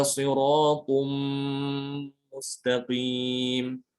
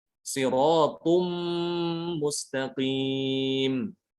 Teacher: Perhatikan saya tidak mengucapkan sirotun, tapi langsung diubah ke mim, huruf mim. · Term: idgham bi gunnah